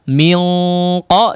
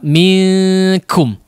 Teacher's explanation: Qaf karena termasuk huruf isti'la maka ikhfa'nya ditebalkan ya, gunnah di ikhfa'nya ditebalkan. Kalau huruf kaf tidak termasuk huruf isti'la maka ditipiskan ya. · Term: tebal dan tipis